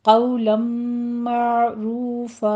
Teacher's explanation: آگے تنوین ہے تو تنوین کا قاعدہ یہاں پہ ادغام الغنہ ہوگا، 2 کاؤنٹ کرنے ہیں۔ معروفہ میں ہم نے عین کو وسط حلق سے ادا کرنا ہے، لیکن دھیان رہے یہاں پہ قلقلہ نہیں کرنا، صرف اس کو سٹاپ کرنا ہے۔